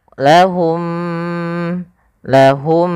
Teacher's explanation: ada dua mim yang saling berdekatan yang di mana makhrajnya sama sifatnya sama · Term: Idgham Mimi